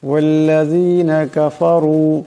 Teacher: রার উপর পেশ আছে, তাই রার আওয়াজটাকে মোটা করে পড়তে হবে